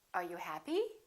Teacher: with yes no questions the intonation goes up